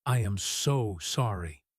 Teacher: in a slow, deep voice, dragging out the word so. That sounds sarcastic.